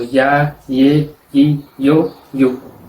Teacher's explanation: pronuncian la Y y el doble L antes de una vocal con sonido de I sobre la vocal